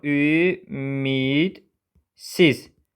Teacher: Burda d cingiltili samiti kar qarşılığı kimi tələffüz olunur.